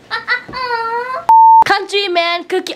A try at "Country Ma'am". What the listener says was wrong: I mean, you said man. You said man. Ma'am.